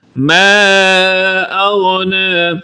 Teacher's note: ما کو لمبا کریں گے، یہاں پر مد منفصل ہے۔